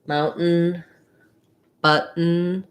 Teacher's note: But I don't say button. There's no release of air on the T. I rise up to the T, and then I just go right into the syllabic N. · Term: stopped T